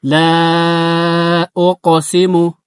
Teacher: أقسم بيوم القيامة لا أقسم هي مد الجائز يبالال ማለት ነው مد الجائز المنفصل ይባላል ሁለት ሐረካ አራትም አምስትም ሐረካ መሳብ ይቻላል